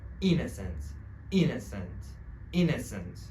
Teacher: the stress in this word is on the first syllable. It means that you should say the first syllable stronger, right?